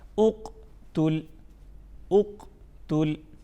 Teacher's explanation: अब चारों हरूफ को इकट्ठा पढ़ते हैं, इससे क्या बना, उक तुल, उक तुल, उक तुल। यानी क़ाफ़ में हरूफ क़लक़ला में से है, तो हम इसमें ये करेंगे कि आवाज़ में जुम्बिश पैदा करेंगे, हिलाएंगे नहीं, हर्फ को हमने हिलाना नहीं है, सिर्फ हम इसमें जुम्बिश पैदा करेंगे ताकि इसमें प्रॉपर वजाहत हो, ठीक है।